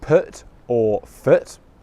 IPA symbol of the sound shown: ʊ